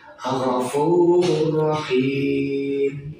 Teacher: Cara bacanya memasukkan tanpa dengung